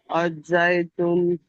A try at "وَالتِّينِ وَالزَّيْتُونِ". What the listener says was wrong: হা নয়, ও। ওয়াও ওয়াও। ওয়াত্তিনি ওয়াজ্জাইতুন।